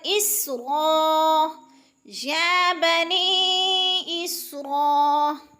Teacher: سین کو جلدی ادا کرنا ہے سیٹی سے، اور کیونکہ سین حروف قلقلہ میں سے نہیں ہے، ہلانا نہیں ہے۔